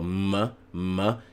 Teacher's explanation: The elemental sound of M is called a bilabial nasal.